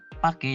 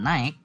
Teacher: kesalahan pelafalan yang dilakukan pada fonem AI menjadi E